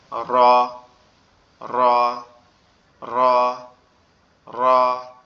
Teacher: র অক্ষরটা আমাদের জিহ্বার আগার উল্টা পিঠ উপরে তালুর সঙ্গে লাগবে, লেগে উচ্চারিত হবে র, র, র, র।